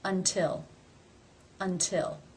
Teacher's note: How do you pronounce the T here? It is beginning a stressed syllable. Therefore, it is pronounced as the real T.